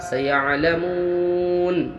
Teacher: مو و مدہ ہوا، واو ساکن پہلے پیش ہے، 1 الف مقدار کھینچ کے پڑھنا ہے